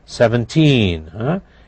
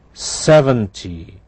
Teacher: notice in the teen numbers the t sounds like t why because the stress is on the second syllable